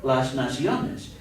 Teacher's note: So when these nouns are plural, they then end in an S, and since that's not an L, an R, or a D, the emphasis naturally falls on the next to the last syllable